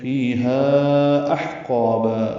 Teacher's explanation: ہا کو 4 حرکات لمبا کریں گے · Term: مد منفصل